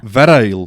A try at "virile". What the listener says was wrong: I think you are. I think you're emphasising the R and the I too much.